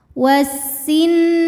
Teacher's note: Nun hukumnya ghunah musyaddadah sebab Nun bertasdid cara bacanya didengungkan tahan bunyi n-nya sampai ada suara masuk hidung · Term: gunnah musyaddadah